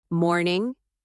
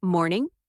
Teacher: With morning, the sound should go down gently, calm, and smooth.